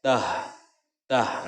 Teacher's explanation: Nah, ini makhraj hurufnya itu keluar hurufnya dari tenggorokan. Tah, jangan ditahan, maka ini lepaskan suaranya karena ini adalah sifatnya adalah sifat rakhwah.